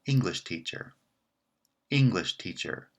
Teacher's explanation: the second word is branching here the answer remains no therefore teacher is the weak member of the larger compound